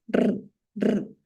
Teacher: La punta de mi lengua se va hacia la zona alveolar y ensancho mi lengua.